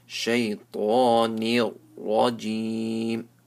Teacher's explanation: Minash shaytanir, so ta is full mouth. Shaytanir, noon is empty mouth, ra is full mouth.